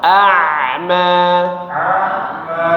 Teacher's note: Ainnya di tenggorokan tengah.